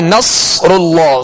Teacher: اور آگے نصر اللہ, صاد پر جزم ہے, صاد ساکن ہے لہذا اس کی آواز ہلے گی نہیں, صاد کو پر پڑھنا ہے, سیٹی کی آواز میں پڑھنا ہے. را پر پیش ہے لہذا را کو پر کریں گے.